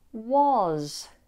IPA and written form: wɒz (was)